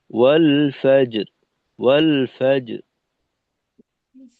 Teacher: যে শেষে যে আমাদের রটা থাকবে ওইটা কিন্তু মোটা হবে